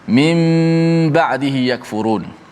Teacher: Maknanya nun tu ditukarkan kepada mim kerana bertemu dengan huruf ba. Maka bacaannya kena baca dengan tukarkan nun kepada mim berserta gunnah, dipanjangkan gunnah itu. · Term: iqlab